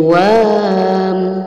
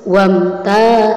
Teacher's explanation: wa itu tidak menjadi mad tabi'i karena setelah alif ada huruf mati, maka tidak boleh dipanjangkan, tidak boleh menjadi wam, tapi harus wamta.